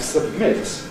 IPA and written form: səbˈmɪt (submit)